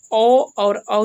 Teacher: उसके बाद आगे चलते हैं, तो आगे जो है कंठ ओष्ठ, यानी कि ओ और औ जो है कंठ और ओष्ठ से उच्चारण होने वाला वर्ण है